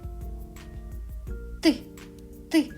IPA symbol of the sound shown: т